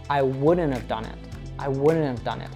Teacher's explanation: And the not disappears also almost altogether. When we see NT in negative contractions, often the T sounds disappear.